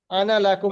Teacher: হামজা নুন আলিফ জবর যখন থাকবে সেই আনাটা টান হবে না